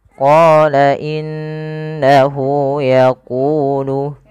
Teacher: pada lafal qo kita panjangkan bunyi qo sepanjang dua harakat karena pada lafal qa ada bacaan Mad Thobi'i yaitu qnya bertemu